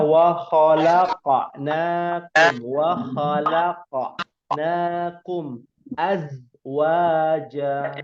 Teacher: Pada huruf qaf dia qalqalah. Pada huruf zai dia tidak qalqalah.